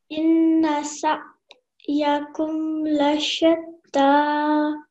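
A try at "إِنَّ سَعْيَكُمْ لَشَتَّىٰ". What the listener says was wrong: Okay, so what you did was you made a bit of a jerk sound here, okay? That's not the case. The ayin is a very smooth sound. Sa yakum.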